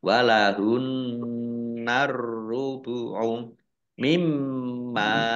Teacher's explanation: mim tasdid juga dibaca gunah atau mendengung ditahan 2 harokat. Mim fathah alif mat tabi'i panjang 2 harokat.